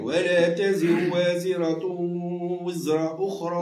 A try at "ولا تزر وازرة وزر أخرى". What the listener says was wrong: لا مش وز.